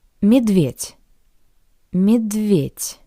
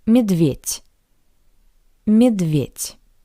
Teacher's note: the voiced consonant D sounds like the paired voiceless consonant T